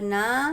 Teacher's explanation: नून अलिफ ज़बर ना, अलिफ मद्दा है, अलिफ मद्दा को हमको एक अलिफ के बराबर खींच कर पढ़ना है